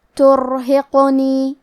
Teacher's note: قاف پہ جزم ہے، لہذا ہمیں قاف کو ہلاتے ہوئے یہ کلمہ کو پڑھنا ہے